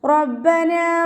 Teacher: റോ ഫതഹ എന്നതുകൊണ്ട് നമ്മൾ ഉയർത്തിയിട്ട് ഉച്ചരിക്കുക കേട്ടോ. റോ എന്നുള്ള സൗണ്ട് തന്നെ കൊടുക്കാൻ ശ്രദ്ധിക്കുക.